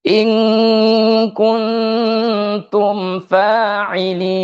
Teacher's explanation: Jadi harus didengungkan dua harakat cuman harus konsisten ya. In dengan kun harus sama dengungannya. · Nun mati bertemu dengan huruf ta itu ikhfa, jadi harus didengungkan 2 harokat.